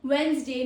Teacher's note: the middle D is silent in the speech.